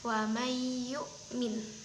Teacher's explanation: Di mana nun sukun bertemu dengan ya, maka nunnya itu secara tidak langsung tidak usah dibaca lalu dimasukkan langsung ke dalam ya. ee di cara membacanya yaitu ee ada diberi tekanan sedikit kepada huruf setelah nunnya. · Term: idgham bihunah